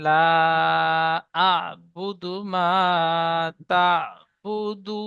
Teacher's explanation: আয়াতের শেষে থামবো, তাই নুনের উপরে জাবারকে বাদ দিয়ে সাকিন ধরে আগের অক্ষরের সাথে মিলিয়ে পড়বো।